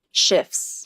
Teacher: There is no T sound in the word shifts.